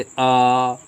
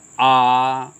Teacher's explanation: हमारा मुंह जो है वृत्ताकार नहीं होगा बल्कि जो है सीधा सीधा होगा और खुला ओपन होगा। ठीक है, जैसे अ, देखिए मुंह सीधा जा रहा है, उठ के नहीं जा रहा है एकदम। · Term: आवृत्तमुखी स्वर